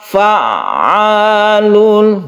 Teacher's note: Jadi kita tekan ke ainnya tapi tidak terlalu ditekan ya, karena dia bersifat tawassut atau tengah-tengah.